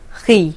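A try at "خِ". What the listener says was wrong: Khi. Pull the corners of your mouth back more. Khi.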